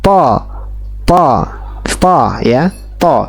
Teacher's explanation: suara yang terdengar seperti huruf o tanpa membulatkan bibir atau mencondongkan bibir. Jadi bukan to, bukan to, bukan, tapi to ya, to. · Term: isti'ala